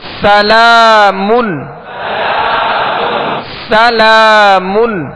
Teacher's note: سین میں سیٹی کی آواز پیدا کریں گے، لام کو ایک الف کی مقدار کھینچ کر ادا کریں گے.